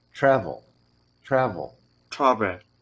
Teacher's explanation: you can hear a little teeny eh at the very end of it, and that's schwa. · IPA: [ə]